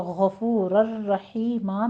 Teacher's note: غفور الرحیم میں غین کو پر پڑھتے ہوئے آگے فو میں واو مدہ ہے